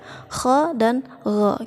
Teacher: Kha dan gha itu satu makhraj, yaitu di tenggorokan yang paling luar.